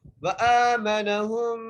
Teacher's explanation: ہا کو میم سے ملاتے ہوئے غنہ کریں گے